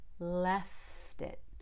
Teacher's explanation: I'm going to link that t to the I but the T will sound like a fast D